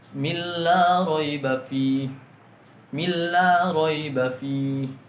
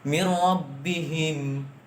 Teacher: Nun mati bertemu dengan ro. Ro itu ialah huruf idgham bila gunnah yang artinya tidak didengungkan.